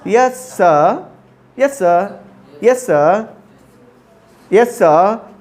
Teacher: र नहीं होता, यस सर नहीं होता, यस स